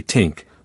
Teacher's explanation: instead of saying think, they might say tink, replacing the TH with a T